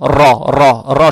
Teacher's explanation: Теперь буква ра с фатхой. Фатха приобретает оттенок о. Ра, ра, ра читается твердо.